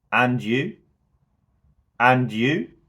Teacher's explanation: my voice Rises at the end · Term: rise in inflection